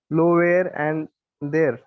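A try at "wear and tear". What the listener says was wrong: Tear, not there.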